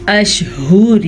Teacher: ہا کے تلفظ کا آپ نے دھیان رکھنا ہے، یہ ہا سینے سے نکلتا ہے یعنی کہ حلق کے آخری حصے سے